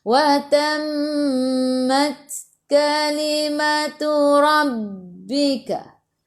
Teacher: Wa tammat mim ada sabdu tekan ke dalam mim dengan 2 harakat. Mat ta ada sukun masuk ke dalam ta dan sedikit sahaja angin sifat huruf ta hamas